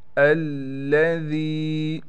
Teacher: ذال کے بعد یا ہونے کی وجہ سے اس لیے ذال کو ہم کھینچ رہے ہیں